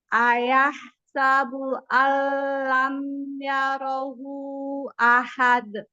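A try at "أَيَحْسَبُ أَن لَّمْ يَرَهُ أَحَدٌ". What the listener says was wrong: Baik, sekarang hu-nya itu ada masilah kubroh 4 atau 5 ketukan. Hu, dipanjangin hu-nya.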